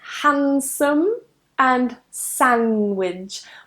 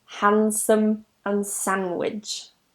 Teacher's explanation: whenever you have a D sound that comes after an N, we tend to not pronounce the D. It's a bit tricky to pronounce it, so we just remove it.